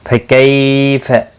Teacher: یا لین ہے، تھوڑا نرمی کے ساتھ کھینچ کر ادا کریں گے۔ قاف مستعلیہ ہے، پر پڑھا جائے۔